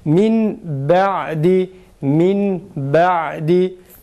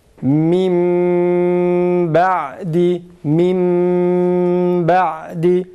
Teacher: Halis mime çevir, tam bir mime çevirerek, yani mimin dışında herhangi bir sıfat Yok. Mimin dışında herhangi bir şeyin eseri yok. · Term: Halis mime çevirerek